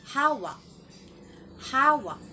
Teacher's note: Isa pang halimbawa ay ang salitang hawak. Nasa unang pantig ang diin.